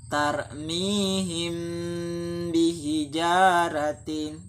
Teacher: mimnya kan dia didengungkan, namun dia juga disamarkan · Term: ikhfa syafawi